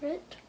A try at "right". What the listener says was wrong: Oh, R-I-G-H-T. Oh, when you see I-G-H-T, that means you pronounce it I. Right.